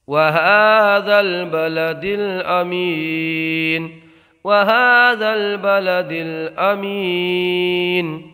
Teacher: دال میں قلقلہ ہوگا، آواز پلٹ کے نکلے گی